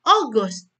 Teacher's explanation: O-nya itu tinggi, Gus-nya itu rendah.